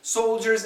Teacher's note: is there an L yeah very small but it is there